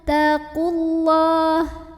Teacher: apabila tidak berhenti, mad tabi'inya gugur, qafnya pendek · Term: takhallus bil hadzfi